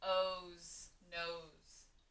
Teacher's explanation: in this word nose, that S almost sounds like a Z, but it is an S sound.